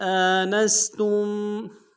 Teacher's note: آنستم، حمزہ کے اوپر کھڑا زبر ہے، ایک مقدار میں کھینچیں گے، نون کو سین کے سامنے لانا ہے، سین کی سیٹی باریک ہوگی